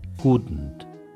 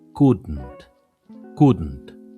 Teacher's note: Couldn't es un poco más gutural la parte donde está la D y la N.